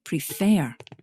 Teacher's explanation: in the word prefer the second syllable is stressed you can check where the stress is by saying the word